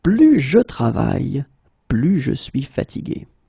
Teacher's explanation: So the first example is plus et plus. Okay, so you can see that I don't pronounce it final S